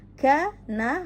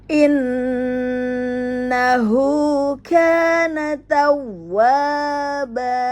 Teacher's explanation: Innahu kana tawwaba, ya. Kana, hati-hati tidak dibaca panjang karena tidak ada mat di sini